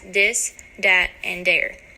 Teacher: another well-known reflection of Chicago dalek revolves around the D sound the th sound found in words like this that and there turns into a soft D sound